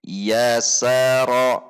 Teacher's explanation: kita tidak boleh memanjangkan harokat, harus satu harokat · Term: satu harakat